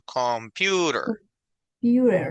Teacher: La fuerza de voz se va al medio.